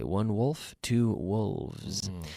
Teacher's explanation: think of the V really it's nothing more than a voiced F